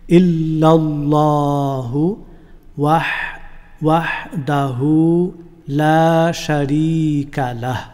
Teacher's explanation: এই আল্লাহ শব্দটি মুখভর্তি করে উচ্চারণ করবেন।